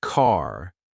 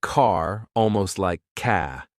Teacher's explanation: But in British English, the R is often silent unless it's followed by a vowel sound. For example, a Brit would say car, almost like ca.